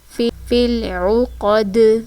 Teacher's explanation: عین پیش عو، فل عو، قاف زبر قا، دال زیر دی، عقادی، آگے وقف آیت کمپلیٹ ہو رہی ہے تو دال ساکن ہو جائے گا۔ ساکن ہونے کی صورت میں دال کی آواز پلٹ کر آئے گی کیونکہ یہ حروف قلقلہ میں سے ہے